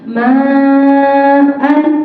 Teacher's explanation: an-nya hilang menjadi panjang 2 harokat